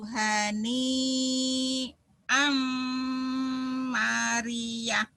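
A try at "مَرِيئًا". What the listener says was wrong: mari ya nya nggak dibaca. A Hamzah satu, Mad iwad ya. Dua patah dibaca satu. Mari. Fakuluhu hani mari.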